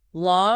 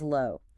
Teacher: Law requires dropping the jaw wide open, while low rounds the lips forward.